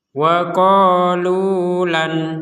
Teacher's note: itu namun misalkan kita berhenti di sini di di Nun sukunnya kita berhenti di Nun sukunnya maka nun sukun ini akan terbaca dengan jelas